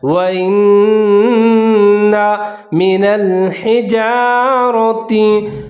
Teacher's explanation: را کے اوپر زبر ہے، موٹا کر کے پڑھنا ہے